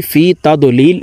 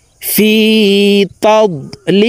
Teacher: আমরা অনেকে এই শব্দটিকে ভুল পড়ে থাকি, ফি তাদলিল এভাবে পড়ে থাকি। এখানে এই দতকে কলকলাহ করা যাবে না, অর্থাৎ ধাক্কা দিয়ে পড়া যাবে না, এভাবে পড়তে হবে ফি তাদলিল।